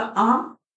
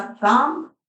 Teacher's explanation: तो मुह ज्यादा खुल रहा है दीर्घ स्वर है